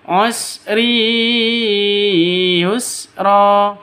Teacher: tanwin bertemu dengan ya, cara bacanya masuk ke ya disertai dengung dua ketukan. Kenapa? Karena idgham bi gunnah.